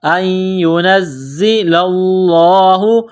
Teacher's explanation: زا کے اوپر تشدید ہے تو زا کو دبانا ہے، سختی کرنی ہے